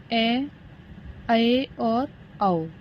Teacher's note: अर्धविव्रत कौन से होते हैं, जिनमें आधा मुंह खुलता है, उसी को बोलते हैं अर्धविव्रत।